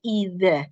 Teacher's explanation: huruf zal, ujung lidah bertemu dengan gigi seri bagian atas, keluarkan sedikit